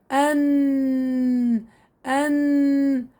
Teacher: طبعا صفات حرف النون بداية عنا الجهر، إن فيها الجهر. نتيجة إخراج حرف النون بصير عندي تضام للوترين الصوتيين، وانحباس كثير لهواء النفس، واهتزاز الأوتار الصوتية